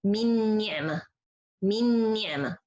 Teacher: The nun in this word, it's disappears, the first nun. And I don't have anything left from it. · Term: Al-idgham kamil بغنة